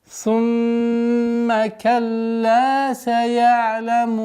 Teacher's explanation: Удержание назализации в размере 2 огласовок мимо.